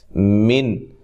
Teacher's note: من نون ساکن کا اظہار ہے، یہاں غنہ نہیں کریں گے